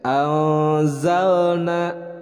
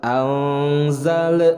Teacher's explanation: huruf lam sukun itu bukan merupakan huruf qalqalah. Jadi dibacanya harus jelas tanpa ada pantulan.